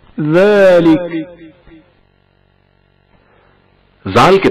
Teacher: ज़ालिक जाल की आवाज बारीक तलफ़ुज़ होती है।